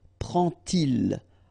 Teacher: you won't pronounce it like d to make the liaison, but you will pronounce it like t. And so you will get prend-il, okay?